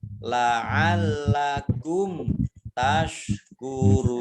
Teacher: mim sukun bertemu dengan huruf ta bacaan izhar syafawi dibaca jelas